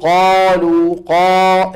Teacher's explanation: بينما لما تقول قالوا قا الالف هذه عم تترك لك مجال تاخذ راحتك اكثر بايه بالتفخيم